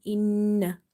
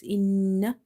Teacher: when you do the gunna, nasalization, your tongue is touching tightly with the upper palate.